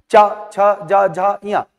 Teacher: आप इसको ऊपर वाले फ्लोर पर टच नहीं करना है और आप चा छा जा झा इया बोल के बताइए, चा छा जा झा इया। आप देखेंगे कि ना चाहते हो भी उच्चारण करने के लिए इस जीभ को आपको तालु में स्पर्श करवाना पड़ेगा। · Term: तालु वर्ण